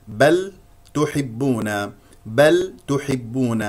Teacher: اللام هي من احرف التوسط التي يجري فيها الصوت فتره زمنيه زمنيه زمنيه بسيطه بل هنا لدينا اللام ساكنه وتوسط